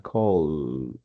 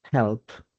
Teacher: y queda la vibración en la garganta, call. Pero cuando decimos help, no queda ninguna vibración. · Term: voiced